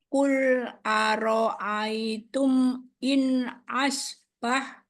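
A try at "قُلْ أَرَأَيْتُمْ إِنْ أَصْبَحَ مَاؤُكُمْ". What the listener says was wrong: Asbaha dong. harokat dong. Harokat.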